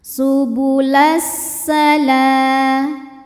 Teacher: Lalu ada hukum namanya alif lam syamsiyah sebab alif lam menghadapi huruf syamsiyah yaitu sin, maka alif lam tidak kita baca atau disebut dengan idgham syamsi